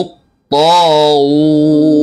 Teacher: পেশের উচ্চারণে দুই ঠোঁট একদম পুরো শুয়ের আগার মতো গোল করতে হবে।